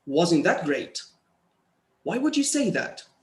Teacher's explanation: So for commenting, you know, we use a falling tone.